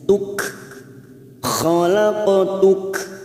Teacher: huruf Kaf ini bukan qalqala tetapi mempunyai sifat Hames pada saat diwakafkan